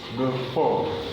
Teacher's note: For instance, this is a function which will not be stressed. And in a word like before, it is for that is stressed, so it's before.